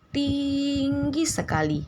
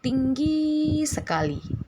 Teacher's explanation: i dari segmen ting diucapkan lebih lama